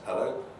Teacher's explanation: a rising tone of hello is also pretty common in telephone calls in terms of answering the telephone